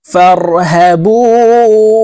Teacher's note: ফেলবো বু এখানে তিন আলিফ টেনে নুনকে সাকিন করতে হবে কারণ মধ্যে আরজি তিন আলিফ টেনিয়া পড়িতে হয়